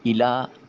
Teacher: حمزہ کو نیچے جھکا کر ادا کریں گے کیونکہ کسرہ ہے، اور لام کے اوپر کھڑی زبر ہے جسے الف المدیہ صغیرہ کا نام دیا جاتا ہے۔